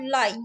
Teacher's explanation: ल जो है आपका ये पार्श्विक व्यंजन कहलाता है